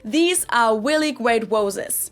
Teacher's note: some Germans who can't pronounce the English R but can pronounce the W will then try to replace the R's with a W sound because they think it's the closest sound to an English R, and they'll say things like, these are really great roses.